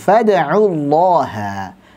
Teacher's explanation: Khusus untuk Allah dan Allahumma sebelumnya fathah atau dhammah maka dibaca tebal.